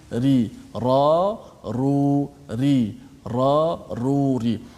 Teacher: Dia ada getaran menyebabkan kadang-kadang kita tak terasa sentuh ke langit, sebenarnya sentuh ra. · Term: sifat takrir